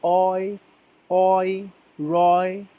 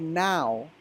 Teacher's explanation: means that two wall sounds mix together while saying these words notice when you say Roy doesn't your mouth move from one sound to another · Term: double vowel sound